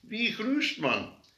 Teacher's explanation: Many old people will consistently replace High German G with a fricative R or H